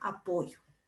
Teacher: hay un relajamiento de la pronunciación de la doble L, la que en estratos socioculturales más bajos puede llegar a confundirse con el fonema Y